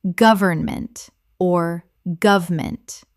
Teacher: Three syllables in careful speech. Often reduced to two in natural speech.